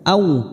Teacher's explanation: huruf waw sukun jangan samakan dengan o. Au u, bibir kita mencucu. Au.